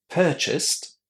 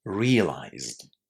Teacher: Purchased is pronounced with the t sound at the end, while realized is pronounced with the d sound there